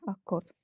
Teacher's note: Yəni ki, uşaqlar 2Q bir K səsinə çevriləcək